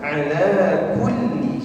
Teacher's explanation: lam tasdid ada nabrah penekanan